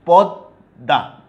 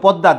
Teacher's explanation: পদ্মা, দেখো যে বর্ণের সাথে ম যুক্ত আছে সেই বর্ণটার দ্বিত্ব উচ্চারণ হচ্ছে দুইবার, পদ্মা, দুইটাই দ, বাট মটা কিন্তু উচ্চারণ হচ্ছে না, ময়ের উচ্চারণ বিলুপ্ত হয়েছে